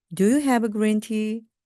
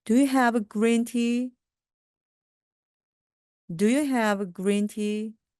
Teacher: do로 시작하기 때문에 끝부분이 올라갑니다.